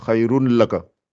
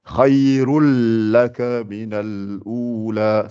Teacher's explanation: On ne dit pas khayrun avec N et puis on fait laka, khayrun laka. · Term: l'entrelacement